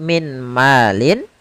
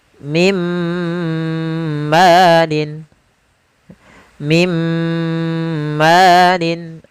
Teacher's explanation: apabila ada nun sukun atau tanwin bertemu dengan huruf mim, yaitu masukkanlah suara nunnya kepada suara mimnya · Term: idgham bil gunnah